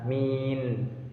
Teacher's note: Kemudian ada min, itu merupakan bacaan mat alif sukun karena ada mat tabi'i bertemu dengan huruf sukun karena waqaf. Panjang bacaannya 2 sampai 3 alif.